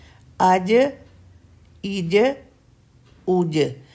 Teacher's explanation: जीम के अंदर चे साउंड नहीं आनी चाहिए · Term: कलकला